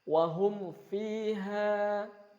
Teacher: di saburahnya ada mim sukun bertemu dengan fa, jelas mimnya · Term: idhar syafawi